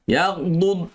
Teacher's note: Jangan yaghdud. Jangan buat qalqalah pada dad